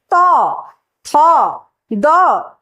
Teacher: তথ দ প্রত্যেকটা উচ্চারিত হওয়ার সময় দাঁতের সাথে জীবে স্পর্শ হচ্ছে। তাই তাকে বলা হয় দন্ত বর্গ।